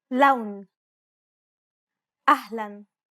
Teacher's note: Unlike the English L, the tongue is ever so slightly flatter and straighter in Arabic.